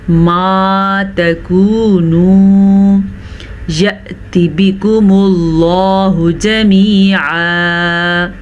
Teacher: لفظ اللہ سے پہلے پیش ہے تو لفظ اللہ کو ہم پر پڑھیں گے. عین کے مخرج کا دھیان رکھیں گے، جمیعا نہیں پڑھنا، جمیعا پڑھنا ہے.